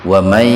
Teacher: nun mati ketemu ya, jadi membacanya huruf nun dimasukkan ke ya dengan mendengung, tahan dua ketukan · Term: idgham bi gunnah